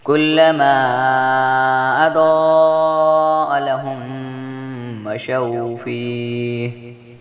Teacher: کلما اضاء لهم مشوا فیہ، ماں پر مد منفصل ہے جس لیے اس کو 3 الف کے برابر لمبا کریں گے۔ ضاد حروف مصالیہ بھی ہے جس لیے اس کو موٹا پڑھیں گے، اور اس پر مد متصل بھی ہے جس لیے اس کو 5 الف کے برابر لمبا کریں گے، اور میم ساکن کے بعد میم متحرک آ گیا جس لیے یہاں پر ادغام شفوی کا غنہ کیا جائے گا۔